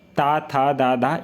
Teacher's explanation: दांतों पर जीभ लगाने से होता उच्चारण